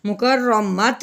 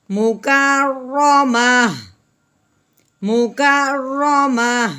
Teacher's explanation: تو ہم نے وقف کی صورت میں ہا کی آواز نکالنی ہے، تا کی نہیں نکالنی. مکرمت نہیں کہنا، مکرمہ، مکرمہ.